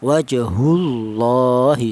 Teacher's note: Jadi setiap ada lafal Allah yang dial huruf yang berharakat dhammah atau lafal Allah yang dial huruf yang berharakat fathah itu lafal Allah itu dibaca tebal atau dibaca tafhim